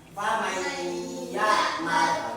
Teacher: mendengungnya may itu loh mendengung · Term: idgham diguna